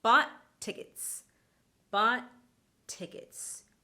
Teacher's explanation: That t sound is only said once.